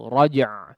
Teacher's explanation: yang paling sering terjadi kesalahan di sini adalah huruf ainnya tidak terdengar ya, atau huruf yang kedua ini seolah dihapus atau tidak terbaca ya.